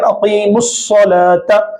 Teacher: اقیم الصلاۃ میں یہاں پر ہم میم کو صاد سے ملا کر پڑھ رہے ہیں